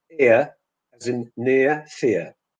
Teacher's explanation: students need to know that the first element is longer